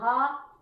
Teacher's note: یہ حروف حلقی میں سے ہے اور اس کا مخرج انتہائی حلق سے ادا ہوتا ہے